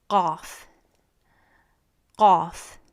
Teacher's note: this sound is made by touching the back of your tongue against the uvula. That's that dangly thing at the back of your throat.